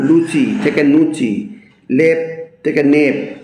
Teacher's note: ল ধ্বনি কখনো কখনো ন ধ্বনিতে রূপান্তরিত হয়